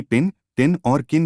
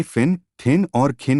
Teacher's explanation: अंग्रेजी भाषी शब्द के आरंभ में पटक ध्वनियों का उच्चारण फ ठ और ख करता है